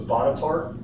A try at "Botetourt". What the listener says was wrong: Botetourt. The R's Yeah, the R's not even there. It's Botetourt.